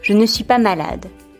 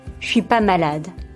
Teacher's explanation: Orally or in colloquial contexts, the ne is often dropped.